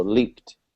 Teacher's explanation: the ed sound actually sounds like a t